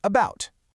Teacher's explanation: It is arguably the most common sound in the entire English language, showing up constantly in unstressed, weak syllables. It's that incredibly relaxed, lazy ah sound you hear right at the beginning of the word about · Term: schwa